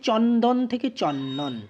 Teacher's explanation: ছিল ন আর দ ছিল তারপরে চন্দনে কি হয়ে গেল না পূর্ববর্তী ন এর প্রভাবে পরবর্তী দ টা ন তে পরিণত হয়ে গেল অর্থাৎ পূর্ববর্তী ব্যঞ্জনের প্রভাবে পরবর্তী ব্যঞ্জন পরিবর্তিত হয়ে সম্যঞ্জনে পরিণত হয়ে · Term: প্রগত ব্যঞ্জন সঙ্গতি